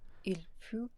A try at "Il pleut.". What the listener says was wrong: So we'd expect that if it was like pu, which is the past participle of pouvoir, I think. But yeah, so we want peu instead of pu.